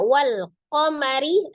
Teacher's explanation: Jadi lamnya dibaca wal qamari, ri-nya dibaca dengan tarqiq ya. Dibaca dengan tipis karena dia ro-nya berharakat kasroh.